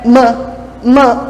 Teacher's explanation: os meus lábios eles impedem um pouco dessa passagem de ar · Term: som bilabial